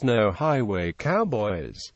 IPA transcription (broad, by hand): ˌnoʊ ˈhaɪweɪ ˈkaʊbɔɪz